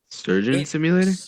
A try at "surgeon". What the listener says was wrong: Not sturgeon, not a fucking fish. You're not just swimming. Surgeon, yeah, like a doctor that operates on people.